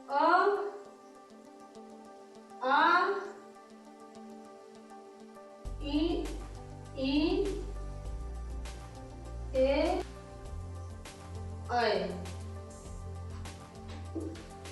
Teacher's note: इस अवृत्तमुखी में स्वर में इनका उच्चारण करने में हमारे होंठ की स्थिति गोलाकार नहीं होती है।